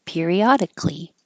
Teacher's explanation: This A in Cali always disappears, and then that C, which sounds like a K, will get closer to the L and sound like clee.